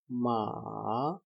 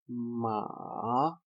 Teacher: The third tone ma. It will fall, then it will rise again